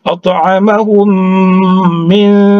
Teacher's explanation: Jadi didegom mimi namanya, ya. Didengungkan, langsung masuk menyambut mim berikutnya, tapi berdengung.